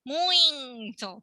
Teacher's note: Por algum motivo muito louco, muito, é nasal.